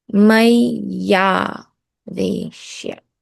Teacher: The E, they both don't join to form one sound. The E changes to a y, and the ah remains the same. So mai aveshya becomes maya veshya. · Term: vowel sandhi